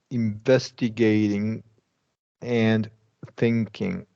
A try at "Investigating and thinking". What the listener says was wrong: Excellent. Yeah, that sounded pretty good.